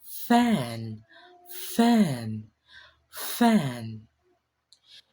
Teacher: You just pushed air through a small tiny gap between your lip and teeth. A steady friction sound. No voice, just air. · In order for us to produce the sound of we need to touch our upper teeth lightly to our lower lip, like this, since it is labiodental. Now, it is voiceless because you won't feel any vibration in your throat, only air flows out